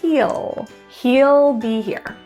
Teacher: It turns to just an ul. We're really reducing that word into ul.